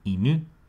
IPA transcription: inɯ